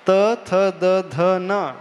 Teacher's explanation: हमारी जीभ जो है नीचे वाले दांत को टच होती है